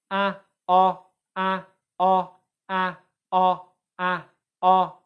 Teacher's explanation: We've got the tongue, which for ah is further back in the mouth.